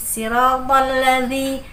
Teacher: zi dia boleh digigit lidahnya sedikit, tapi tidak terlalu digigit banget, dia hanya ditempelkan saja